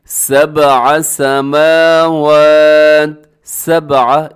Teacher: با ساکن ہے، حروف قلقلہ میں شامل ہے، اس کی آواز کو ڈبل کرنا ہے